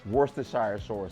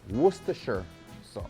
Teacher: my Jamaican people would pronounce it Worcestershire sauce because we pronounce all our vowels